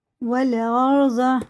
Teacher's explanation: الف نہیں پڑھا جائے گا، واو سیدھا لگے گا لام میں